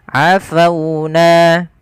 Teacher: di sini ada huruf waw yang didahului dengan huruf fathah, maka ia kita namakan dengan bacaan lin, yang dimana lembut di dalam melafalkannya.